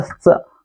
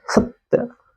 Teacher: इस स का उच्चारण हम लोग दांत से करेंगे तभी दंत्य स कहलाएगा। इसको पहले की तरह श नहीं, इस तरह से नहीं पढ़ेंगे, ये गलत है।